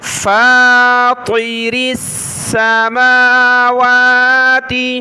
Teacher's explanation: طا جو ہے کلرفل ہے، اس کو موٹا پڑھنا ہے، باقی جو آگے را ہے اس کو باریک پڑھیں گے، را کو سین کے ساتھ ملایا۔